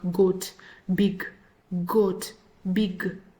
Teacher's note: G is another sound that is voiced like d